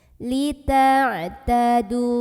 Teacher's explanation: Maka cara membacanya adalah huruf dal yang barisnya dhammah ini kita panjangkan sepanjang 2 harokat saja. Lita'tadu. Jadi walaupun berhenti 2 harokat tetap. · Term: mad tabi'i